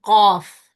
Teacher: There's a force to it. And because articulation point is completely closed, it's a shidda letter · And then the back of the tongue is raised, so it's isti'la, and it is not, the middle of the tongue is not raised, so it's infitah.